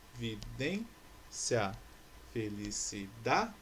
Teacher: Todas essas palavras possuem sílaba tônica a penúltima. Então, todas essas palavras aqui embaixo são palavras paroxítonas.